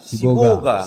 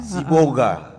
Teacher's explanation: Kalau orang pesisir sendiri mengatakannya Siboga. Siboga ya. Siboga. Tidak kedengaran L-nya.